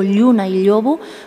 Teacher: desde el punto de vista fonético usa palatalización de la L inicial